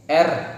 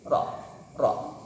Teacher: Tahrir yaitu satu kali getaran harus pada ujung lidah